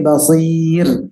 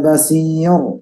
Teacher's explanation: ketika ro itu di level vokal i maka dia tidak tebal, menjadi tipis